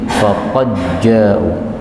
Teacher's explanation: pada ayat 4 ini ada dal ketemu dengan jim, ini boleh idgham menjadi faqad ja'u